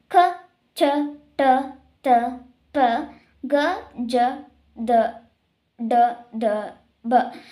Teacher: ಕಡಿಮೆ ಉಸಿರಿನಿಂದ ಹೇಳುವಂತಹ ವ್ಯಂಜನಗಳಿಗೆ ನಾವು ಏನಂತ ಕರೀತೀವಿ ಅಲ್ಪ ಪ್ರಾಣಾಕ್ಷರಗಳು ಎಂದು ಕರೀತೀವಿ